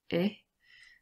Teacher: this is an open mid front vowel sound